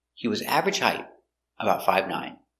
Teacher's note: we stress important words average is the important word because average is an adjective